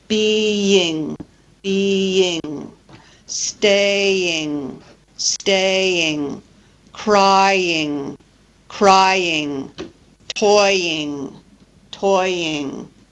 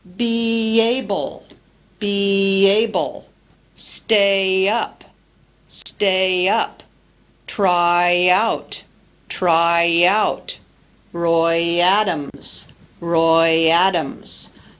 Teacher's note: we use a y glide when we link vowel to vowel following the front vowels, E, A, I, and also the diphthong oi, either inside a word or between words.